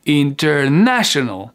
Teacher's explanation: Ma voix, elle est devenue un peu plus aiguë sur le na.